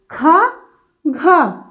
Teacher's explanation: ज्यादा हवा निकल रही है मुह से ज्यादा शवास निकल रही है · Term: महाप्राण